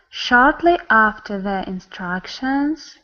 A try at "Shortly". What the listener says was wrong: You're not getting your round sound. Shortly. You hear? It just sounds really straight.